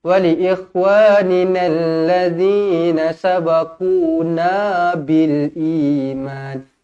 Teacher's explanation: Tengok ni dekat sini, na ni ada alif. Dekat na ni ada alif. Jadi bacanya mad asli 2 harokat.